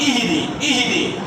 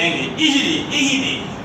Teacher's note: ہاں حلق کے سب سے نچلے والے حلق سے ادا ہوتی ہے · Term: لاہور والی ہاں